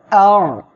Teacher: আইন অক্ষরটি আপনারা গলাটা চেপে উচ্চারণ করবেন